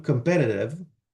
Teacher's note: you get flapping, so weakening of the consonant before the weak vowel